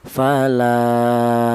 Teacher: Berhubung ada alifnya mad thai, maka berfungsi untuk memanjangkan bacaan. Maka la ini dipanjangkan dua ketukan seperti contoh fala seperti itu. · maka la ini dipanjangkan 2 ketukan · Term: mad thobi'i